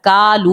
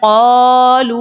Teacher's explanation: ہم کالو نہیں پڑھے، کالو پڑھتے تو پھر باریک ہوتا، کالو پڑھتے تو یہاں پر ہم پڑھے قالو. جب ہم قا نکال رہے قاف کو موٹا پڑھیں تو خود بخود الف بھی وہ موٹا بن جاتا ہے